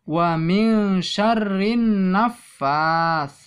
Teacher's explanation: ketahui bersama bahwa nun mati bertemu sin itu bacaan ikhfa aqrob kasrah itu hukumnya rok tarqiq harus dibaca tipis